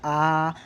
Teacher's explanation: आ पूरा आप लोगों का मुंह जो खुल रहा है ना तो वो विवृत मतलब ओपन वाला जो वर्ण है ना वो आ है।